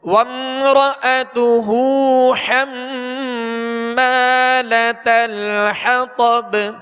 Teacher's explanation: طا کو پر پڑھیں گے اور آگے با پر قلقلہ کریں گے، یعنی آواز میں جنبش ہوگی، آواز لوٹتی ہوئی محسوس ہو · حم اس کے اوپر شد ہے، اس میں غنہ کریں گے